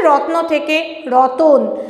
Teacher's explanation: এমনিতে ব্যবহার করাই হয় রত্ন কথাটা থেকে রতন কথাটা এসেছে অর্থাৎ তটা ছিল ত হাফ ন হাফ এই দুটো হাফটা কি হচ্ছে ভেঙে যাচ্ছে ত এর সঙ্গে একটা অ আসছে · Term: মধ্যস্গম